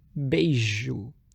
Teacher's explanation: som mais palatal, fazendo [ʒ], assim bāsium virou bei[ʒ]o